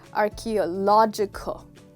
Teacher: the catch here is that this word is stressed on lodge